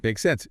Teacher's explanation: with a rising intonation at the end